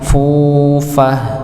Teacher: huruf fa dengan dhammah ya, dan setelahnya kita temukan ada huruf wawu sukun, maka dipanjangkan. Wa namariqu masfufah fufah nggih, maka dipanjangkan nggih, jangan lupa dipanjangkan dua harakat ya.